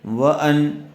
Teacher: نون ساکن کے بعد حروف حلقی میں سے حمزہ آیا ہوا ہے، اس لیے بغیر غننے کے جلد اظہار کر کے پڑھیں گے